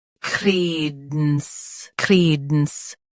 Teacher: Stress cre. Keep dence soft and quick.